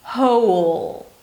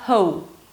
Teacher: Don't round your lips so much, it's not a W sound, right?